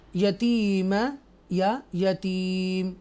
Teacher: फ़ज़ालिकल्लज़ी यदुल यतीमा, हम यदुल यतीमा भी पढ़ सकते हैं और यदुल यतीम, वक्फ की सूरत में यतीम पढ़ेंगे और आखिरी मीम के ऊपर जो ज़बर है उसको हदफ कर लेंगे, हाइड कर देंगे और ऊपर लॉजिकली जज़म लगा देंगे।